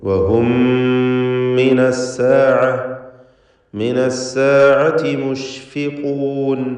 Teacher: മീമിന് ശേഷമുള്ള ഹറക്കത്തുള്ള മീമിൽ പൂർണ്ണമായും ലയിപ്പിച്ച് മണിക്കുക. ഇദ്ഗാം ഷഫവി അല്ലെങ്കിൽ ഇദ്ഗാം മിസ്ലൈൻ സഗീർ എന്നൊക്കെ അതിന് പേര് നൽകാം.